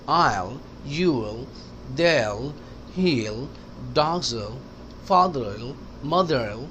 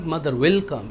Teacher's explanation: विल जब भी spoken English में आएगा तो कनेक्ट हो जाता है। विल अलहदा नहीं कहते।